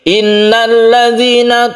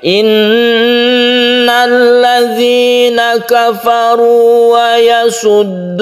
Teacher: Nun yang bertasydid itu disebut gunnah musyaddadah. Hukumnya yaitu didengungkan. Kita tekan bacaan nun ini dan kita itu berdengung.